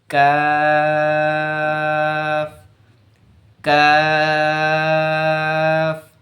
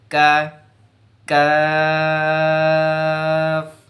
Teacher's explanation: আর কাফের ক্ষেত্রে একটু আগে সামনের দিকে, জিভের গোড়াটা একটু বরাবর অঞ্চলের সামনের দিকে আগিয়ে উচ্চারণ করতে হবে।